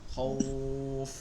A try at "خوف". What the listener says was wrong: এক আলিফ টান হবে লাস্টে।